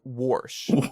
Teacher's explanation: around here it's warsh with an R sound